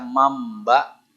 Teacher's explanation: tulisannya manba dibaca mamba di situ ada mim kecil namanya hukum iqlab